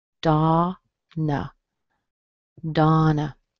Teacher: The O in Donna usually sounds like ah, as in father.